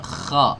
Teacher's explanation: Bedanya itu kha itu nafasnya ikut keluar. Ya, nafasnya ikut mengalir keluar. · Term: hams